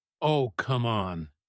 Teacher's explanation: Let Oh, come on burst upward quickly, light, and joking.